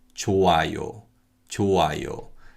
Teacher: when we have 히읗 겹받침 and the following syllable begins with an 이응, then 히읗 겹받침 is just silent.